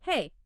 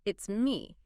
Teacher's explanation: It goes up slightly on hey, and then it comes down at the end on me. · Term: rise-fall contour